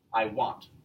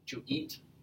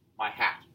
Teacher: an iamb has the first syllable unstressed and the second syllable stressed or emphasized.